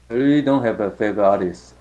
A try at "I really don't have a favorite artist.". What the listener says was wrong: Good, perfect.